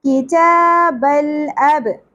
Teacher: اب با ساکن پہ قلقلہ ہوگا